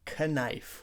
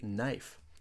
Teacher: we don't say k knife we just say knife the K is silent